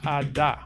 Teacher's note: atta but phonetically you might have something like a da where the voicing on the vowels that surround this sound sort of cause the sound that appears between them also to become voiced